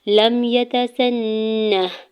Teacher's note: लम यतसन्ना लाम के ज़बर को मीम साकिन के साथ मिलाएंगे, या के ज़बर को ता के ज़बर को बगैर खींचे हुए अदा करना है, सीन के ज़बर को नून शदद के साथ मिलाते हुए गुना करना है, और हा साकिन है तो उसको साकिन ही पढ़ेंगे।